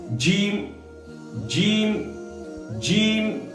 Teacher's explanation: جیم یہ زبان کا چولا والا حصہ جو ہے، زبان کا بیچ اور اوپر کے تالوں میں جو ہم سٹائیں گے تو نکلے گا جیم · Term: جیم کا مخرج